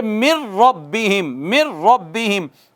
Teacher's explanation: نون اب نہیں پڑھا جائے گا، اب ڈائریکٹ را پہ جائیں گے، چونکہ نون تو اس میں داخل ہو گیا نا، نون کا تو ادغام ہو گیا را میں، اب پڑھیں گے من ربہم، من ربہم۔